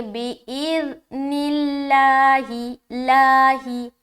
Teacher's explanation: جب بھی لفظ اللہ آئے، غور و دھیان سے سنیں گے، جب بھی لفظ اللہ آئے اور اس سے پہلے زیر ہو، یعنی کہ اس سے پہلے کا مطلب یہ ہے کہ اس سے پہلے والے حرف کے نیچے زیر ہو، تو لفظ اللہ کا لام کو باریک ادا کرنا ہے، باریکی کے ساتھ پڑھنا ہے، ٹھیک ہے. یعنی کہ بولڈ نہیں کرنا، لائٹ پڑھیں گے.